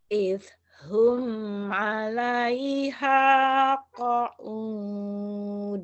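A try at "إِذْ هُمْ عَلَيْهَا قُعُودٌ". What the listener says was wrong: Qu'ud bukan qaud.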